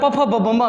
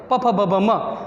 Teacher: પફ ભભ મ બોલીએ છીએ તો 2 હોઠ હલે છે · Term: ઓષ્ઠ